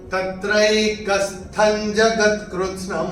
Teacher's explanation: ये अनुस्वार चरण की समाप्ति पे आ रहा है, तो इसका उच्चारण केवल और केवल म ही होगा